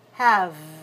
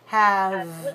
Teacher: Make sure all the way to the closure here, the lower lip against the upper teeth